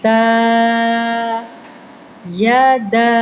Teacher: دال کے اوپر کھڑی زبر ہے، حروف مدہ کا قاعدہ لگے گا، مطلب ایک سے ڈیڑھ الف کی مقدار لمبا کریں